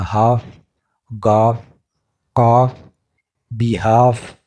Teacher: جب ایف کو ایل کے بعد لاتے ہیں تو یہ ایل کی آواز کو ختم کر دیتا ہے، ایل کی آواز سائلنٹ ہو جاتی ہے۔